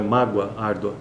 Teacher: apesar de ser uma letra O ou o mas eh o som que sai é de U